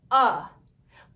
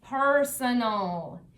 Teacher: AL is actually a suffix, which, remember, is a word part added to the end of a word to change what the word means. Now, when we read this suffix, AL, we pronounce it with the schwa sound. So the A doesn't say A and it doesn't say A.